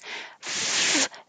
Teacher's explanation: the top teeth touch the bottom lip and you have constant air flow